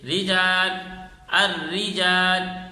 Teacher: را مشدد یا غیر مشدد کے نیچے زیر ہو تو را باریک پڑھی جائے گی، جیسے رجال، الرجال، یعنی را کے اوپر تشدید ہو، را کے نیچے زیر ہو، را کے اوپر تشدید نہ ہو، را کے نیچے زیر ہو، دونوں صورتوں میں را کو باریک پڑھیں گے۔